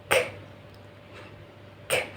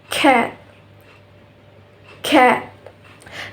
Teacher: The place of articulation is velar. Velar produced when the back of the tongue touches or approaches the soft palate on our mouth. And the manner of articulation is plosive.